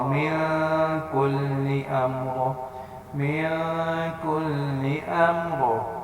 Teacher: اب من پہ یہاں پہ اخفا ہو رہا ہے، کیوں؟ نون ساکن کے بعد کاف آ رہا ہے، نہ حروف حلقی ہے، نہ حروف المنون، نہ الف ہے، نہ با ہے، تو یہاں پر کیا ہوگا؟